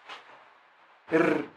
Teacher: أي أن مخرج الراء من اللسان مع الحنك، مع ما في الراء من التكرر والتردد